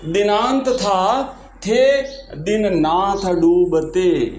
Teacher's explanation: इस काव्य पंक्ति में उच्चारण स्थान दंत से उच्चरित होने वाले अनेक वर्णों जैसे त थ द न की आवृत्ति हुई है, अतः यहाँ पे श्रुत्यानुप्रास अलंकार है। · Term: दंत्य